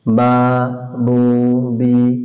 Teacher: 16 নম্বর মাখরাজ, মুখের খালি জায়গা হইতে মদের হরফ উচ্চারিত হয়